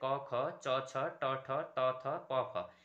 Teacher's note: तो अघोष वर्ण कौन कौन से, वर्ग के पहले और दूसरे वर्ग